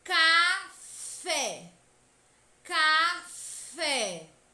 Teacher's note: aberta deve ser para fora veja os exemplos na palavra café o acento agudo indica que a última sílaba é a sílaba tônica